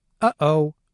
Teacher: notice how there's a brief silence between the two syllables · the vocal folds can also be closed, and if this happens, then all of the airflow through the glottis might stop for a brief period. If this happens, the sound that's produced is referred to as a glottal stop.